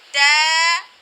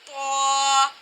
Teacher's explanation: تا کی آواز کو باریک اور طا کی آواز کو موٹا کر کے پڑھا جائے گا